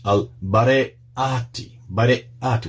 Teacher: Barayati, with the glottal stop there